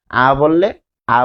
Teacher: আ বললে মুখটা বেশি খোলা হয়ে যায় এবং যখন জিবাটা ফ্ল্যাট শোয়ানো থাকে